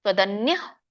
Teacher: ತ್ವದನ್ಯಃ, ಇಲ್ಲಿ ಅಲ್ಪವಾಗಿ ವಿಸರ್ಗ ಉಚ್ಚಾರಣೆ ಮಾಡ್ಬೇಕು.